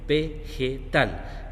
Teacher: La sílaba que se pronuncia más fuerte es tal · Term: sílaba tónica